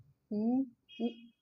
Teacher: ओष्ठ स्वर उ है, ओठ के उच्चारण से होता है